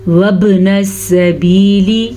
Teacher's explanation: با کے اوپر کلکلا ہو رہا ہے کیونکہ با ساکن